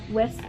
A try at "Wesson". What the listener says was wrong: No T. Wesson. Like Wesson.